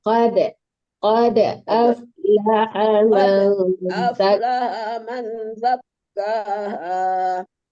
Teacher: Jangan qad, jangan mati total ya. Soalnya dal itu huruf qalqalah.